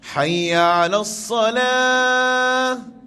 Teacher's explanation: Penutup dia di hujung hayya 'alas salah tu dengan ha dada ataupun ha simpul